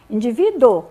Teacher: as duas vogais juntas em que o u é semivogal e o o é vogal · Indivíduo, quase a gente nem fala, né? Quando a gente vai falar, a gente quase nem fala o U. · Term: ditongo